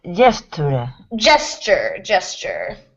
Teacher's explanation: the S and the T, it almost makes like a ch sound here